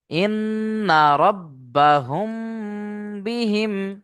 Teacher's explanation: মিম সাকিনের পরে বা এসছে হা মিম পেশ হুম বলে এক আলিফ গুন্না করতে হবে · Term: ইকফায়ে সাফাবি